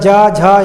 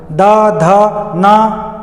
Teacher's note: सघोष है। इनके उच्चारण में गुंजन होता है।